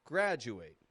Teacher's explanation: Again, blending the D and U sounds together.